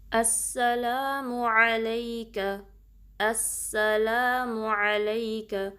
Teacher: सीन में सीटी वाज़े करनी है और टाइम देना, तशदीद ड्रॉप नहीं करनी